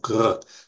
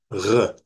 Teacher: It is a r sound, r, like you're gargling almost